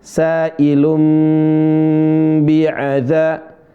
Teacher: suara nun dibalikkan menjadi suara mim, bukan menjadi suara ba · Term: iqlab